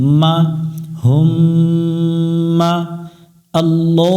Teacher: মিমের উপর তাশদিদ এই মিমে গুন্না করা ওয়াজিব